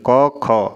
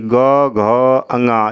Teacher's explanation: क ख वाली ऊपर से नीचे तक लाइन का उच्चारण करेंगे तो वहाँ पे गले में कंपन नहीं होगा तो उसे अघोष कहेंगे। जैसे क ख कंपन नहीं हुआ, अघोष है ये।